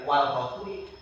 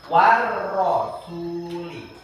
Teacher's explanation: Karena Dia asyamsiyah bacanya harus ditasdidkan dimasukkan